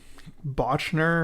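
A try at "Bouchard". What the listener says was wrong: Botcher. no N.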